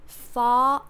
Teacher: so we have in terms of intonation far a high note far pause no linking no R